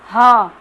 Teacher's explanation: ह कंठ से आ रही है आवाज